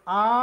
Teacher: আ উচ্চারণের সময় জিহবা শুয়ে পড়ে এবং জিওবা সামনের দিকেও আসে না জিহবা পিছন দিকেও যায় না আ বললে জিহোবা শুয়ে থাকে অপরিবর্তনীয় একবারে নিচের দিকে পড়ে থাকে